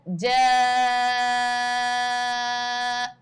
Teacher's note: اب اس میں کیا ہے، جب یہ مد لگا ہے تو ساتھ ساتھ آپ دیکھیں کہ اس میں یہ ہے کہ الف سے پہلے والے حرف پر زبر بھی ہے، تو یعنی کہ یہ یہاں پر الف مدہ بھی بن رہا ہے۔ تو یہ تقریباً 5 سے 6 الف کے برابر یہ مد کھینچا جائے گا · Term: بڑا مد